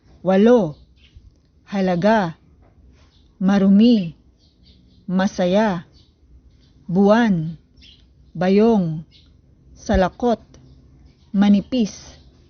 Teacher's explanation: binibigkas ito ng tuloy-tuloy may diin sa huling pantig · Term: mabilis